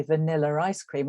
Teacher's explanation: So in a phrase like vanilla ice cream at the end of the first word there, a speaker from my language background is likely to say vanilla ice cream, and there's an R inserted in there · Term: intrusive r, intrusive R